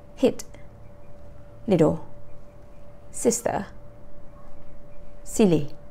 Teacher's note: your tongue is a bit further back in your mouth than e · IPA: /i/